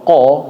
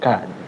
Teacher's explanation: Di huruf kaf. Huruf kaf jangan terlalu belakang ya Pak. Jadi keluarnya jadi kayak huruf qaf. Jadi kalau mengucapkan kaf, kalau ini lidah, di depannya sedikit dari huruf qaf ya.